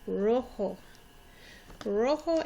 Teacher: Again, you notice the J makes an H sound. O sounds like a long O sound.